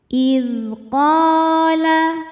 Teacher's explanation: Cara membacanya, qaf dipanjangkan 2 harokat. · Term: mad tabi'i zahiri